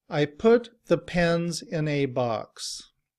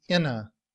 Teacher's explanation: In reduced form, we don't say A. We would use the sound of the schwa, which is the upside down E, And when we combine that with the word in, we just say inna.